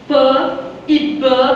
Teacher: p e b que são os explosivos labiais